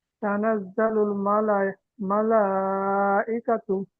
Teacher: এই লামটি টান হবে, কাপ টান হবে না।